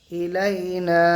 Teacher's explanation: আলিফ মাদ্দাকে এক আলিফ টান দিয়ে পড়বো